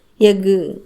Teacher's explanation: கடைசியில் இருக்கக்கூடிய இந்த கு அரை மாத்திரை அளவுக்கு தான் குறைந்து ஒலிக்கிறது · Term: குற்றிய லுகரம்